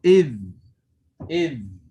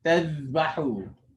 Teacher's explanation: the tongue is going to remain on the edges of the upper teeth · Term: dhal that is sakin